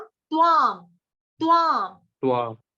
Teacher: तवामी। जब आप तवा बोलोगे तो त पूरा हो जाएगा, यहाँ पे तो आधा है ना